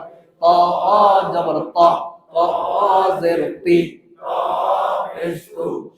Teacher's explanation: সামনের ওপরের দুই দাঁতের গোড়া থেকে মোটা ভাবে আদায় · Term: ইস্তিলা